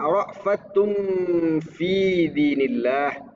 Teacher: Rfatun fi itu hukumnya berdengung. Ada huruf ta berharakat domah atau tanwin bertemu huruf fa. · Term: Ikfa hakiki